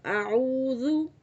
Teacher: ऊ जो है इसको आपने 2 सेकंड के लिए खींचना है, क्योंकि ऊ के आगे जो है आइन वा पेश ऊ, वाव जो है ये मद्दा है, हरूफ मद्दा में से आ रहा है। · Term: वाव मद्दा